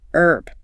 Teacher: British English almost always pronounces it. Herb with the H sound.